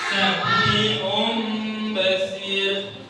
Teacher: Mengubah yang tadinya huruf ba atau tanwin ini berubah menjadi mim. Jadi apabila ada tanwin atau nun mati nun sukun bertemu dengan huruf ba, maka suaranya berubah menjadi mim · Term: iqlab